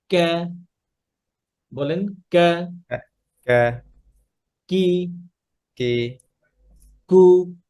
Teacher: প্যালেট শক্ত যে জায়গাটা উপরের ওখানে লাগবে